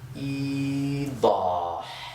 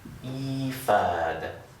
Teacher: our 'waaw' needs to match that 'kasra,' So it actually turns into a 'yaa.'